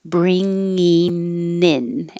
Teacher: i'm going to say in with my tongue coming up in the front bringing in and now the n will connect to the in · The first one will keep bring, but instead of ing at the end, with my tongue going high in the back, I'm going to say in with my tongue coming up in the front